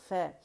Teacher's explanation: یا یوں کہہ لیجئے کہ نچلے ہونٹ کا پیٹ اور اوپر کے آپس کے دانت آپس میں جڑیں گے نرمی سے ، ف، ٹھیک ہے، ف، اور جڑ کے جدا ہو جائیں